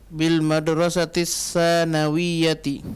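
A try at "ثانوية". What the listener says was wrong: Nah, yang panjang sa-nya, bukan nunnya. Bil madrasatis sanawiyati. Banyak orang baca bil madrasatis sanawiyah, salah. Sa-nya yang panjang.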